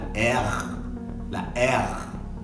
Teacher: Para poder hacer la R tiene que venir de la garganta. No es como nosotros que la hacemos con la lengua, no es la R, es la R.